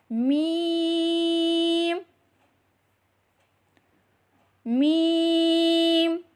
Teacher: मीम मीम दोनों होठों के खुश्क हिस्से से अदा करें · دونوں ہونٹوں کے خشک حصے سے ادا کریں